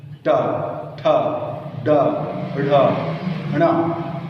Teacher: टवर्गी वर्णों का उच्चारण मूर्धा से ही होता है। ट, ठ, ड, ढ, ण, सभी का।